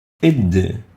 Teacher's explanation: It articulates at the top of the tip of the tongue with the upper incisor teeth